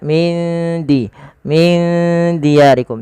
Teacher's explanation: Hukumnya sama sebagaimana ketika ada nun mati bertemu dengan huruf fa, yaitu disamarkan nunnya kepada huruf dalnya. Maka huruf dal itu makhrajnya dari ujung lidah kita yang bertemu dengan perbatasan antara gigi atas dan gusinya.